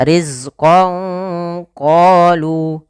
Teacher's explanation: Sehingga misalkan ban itu sama dengan ketika kita tulis dengan ba nun sukun maka dinamakan nun sukun dan tanwin. Maka samarkanlah suara nunnya kepada huruf qof.